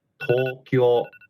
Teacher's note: When you say Tokyo, when we pronounce Tokyo, both the O's are long sounds. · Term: Long O sound